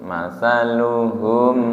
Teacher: Mataluhum ketika hum tidak disentak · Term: tawasut